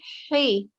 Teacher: this ha, the sound should come from the middle of your throat